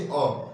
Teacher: जिसको बोलने के लिए जीभ का मध्य भाग कार्य करे उसे ही हम क्या कहते हैं? मध्य स्वर कहते हैं। जैसे अ बोल के देखिए, अ मध्य भाग कार्य कर रहा है ना, आप ट्राई कर लीजिएगा, ठीक है।